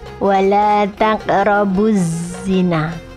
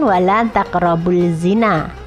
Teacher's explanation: Lam ta'rif bertemu dengan huruf za, maka dimasukkan tidak terbaca. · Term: idgham syamsiyah